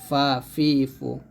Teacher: উপরের দাঁতের নিচের ঠোটের বাতাস চালু রেখে উচ্চারণ করতে হবে ফা অর্থাৎ উপরের দুই দাত নিচের ঠুটের সাথে লাগাবেন ফা জবর